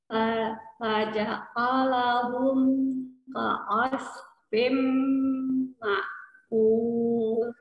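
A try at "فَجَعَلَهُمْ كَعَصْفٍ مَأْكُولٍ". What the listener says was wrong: Oh, faja'alahum. Dibuka aja rahangnya. Jangan terlalu lebar. Coba di ka'asfi, ka'asfim ma'kul. Ma'kul, enggak kul, tapi kul tipis. Fim ma'kul. Tidak kul, kul, tidak ku, ku. Kul, coba. Kakiku, ku. Tidak ku ya, ku, ku biasa aja.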